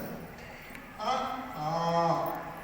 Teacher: ಇದನ್ನು ಹೇಳಲಿಕ್ಕೆ ಯಾರ ಸಹಕಾರವು ಬೇಡ ಬರೆ ಗಂಟಲು ಸಾಕು